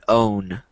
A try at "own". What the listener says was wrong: No, not with an H. There's no H there, so it's just own.